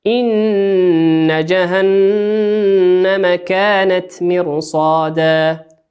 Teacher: إن نون مشددة مقدار حركتين